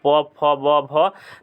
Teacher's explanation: तो भ आता है आपका ओष्ठ में